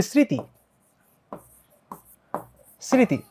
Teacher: মফালা শব্দের শুরুতে থাকলে সেটার উচ্চারণ হয় না কিন্তু একটা নাসিক্য ভাব কিন্তু থেকে যায়